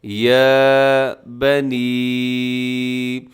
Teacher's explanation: چھوٹی مد ہے اور کھڑا زبر کو تھوڑا سا لمبا کرنا ہے